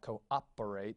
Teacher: It's a little glottal stop sound is something you would hear in like cooperate, that little operate part of it.